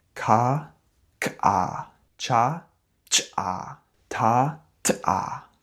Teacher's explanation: as you pronounce these sounds, you produce a quick, almost explosive puff of air. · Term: ejective consonants